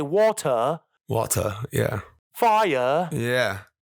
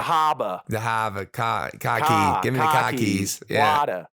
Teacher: there's a non-rhotic nature to the language that's ancestrally reminiscent of how the British talked